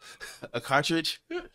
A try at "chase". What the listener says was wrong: Oh, you can't say chase. You keep saying trace.